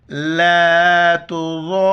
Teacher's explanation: ضاد کو موٹا کر کے پڑھیں گے اور مد کی وجہ سے 4 الف کی مقدار کھینچنا ہے